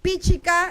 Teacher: La fuerza está en pi. La segunda sílaba es abierta, por lo tanto, la fuerza debe ir en la primera. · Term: fuerza de pronunciación